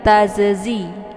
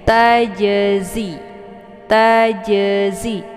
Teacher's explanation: Jadi, sifat berbeda, makhrajnya juga berbeda. Jim letaknya di tengah lidah, sementara zai letaknya di ujung lidah. Ya, zai dia sifatnya shofir.